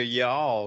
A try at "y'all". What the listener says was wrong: Yeah, too much L on the end of it.